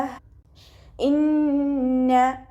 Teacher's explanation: അഖസൽ ഹൽക്കിൽ നിന്നാണ് ഹംസ വരുന്നത്, അപ്പോൾ അതിൻ്റെ സൗണ്ട് ക്ലിയർ ആക്കുക. · നൂനിന് ശ്രദ്ധ വന്നിട്ടുണ്ട്, അപ്പോൾ നല്ലോണം മണിച്ചിട്ട് ഉച്ചരിക്കുക കേട്ടോ.